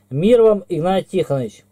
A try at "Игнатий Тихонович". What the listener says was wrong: Научись окончание четко говорить.